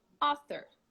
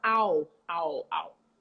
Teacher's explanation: ah a very open ah and it's not all very closed it's between ah and oh okay so we're gonna relax your lips and say ah all